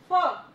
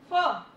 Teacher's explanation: तो फ करने के लिए जो आपका ऊपर वाला टीथ है वो आपके नीचे वाले लिप्स को टच करेगा।